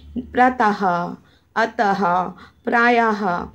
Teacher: किसी व्यंजन के बाद यदि विसर्ग यानी कि ये स्वर चिन्ह लगा हो तो उसका उच्चारण अह।